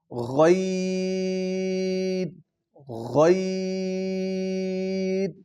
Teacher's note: آگے ہے لفظ عین، پھر یہ حروف حلقی میں سے دو لفظ آگے، پہلے دو حروف حلقی ہم پڑھے تھے ہم نے، ہا اور خو، اب عین اور غین، عین وسط حلق اور غین ادنا حلق، جو حلق کا پہلا حصہ ہے وہاں سے غین ادا ہوگا